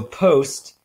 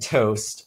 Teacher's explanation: the voiceless bilabial stop and the sound - the voiceless alveolar stop at the start of the words